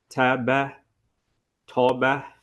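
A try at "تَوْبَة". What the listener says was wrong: But are you hearing that you're saying that ha? Yeah. Yeah, on the ta, yes, and the fa, yes. No, you should extend it.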